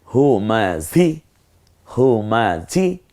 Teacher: আর এই হটা কণ্ঠনালীতে ছেড়ে দিয়ে ঝটা একটু ঝিঝি আওয়াজে হবে